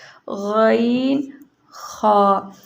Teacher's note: غین اور خا جو ہمارے منہ کی طرف والا حلق ہے اس سے ادا ہوتے ہیں، یعنی کہ ادنی حلق، غین، خا۔